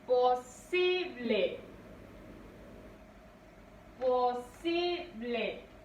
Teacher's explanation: Recae la mayor fuerza de voz en sí.